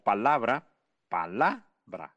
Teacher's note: el acento de la palabra palabra lo tiene en la segunda sílaba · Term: sílaba tónica